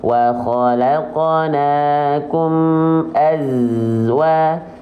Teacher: Sofir itu artinya adalah desis. Nah, karakteristik desisnya untuk huruf zai itu seperti sengatan lebah. Nah, itu harus jelas sengatannya.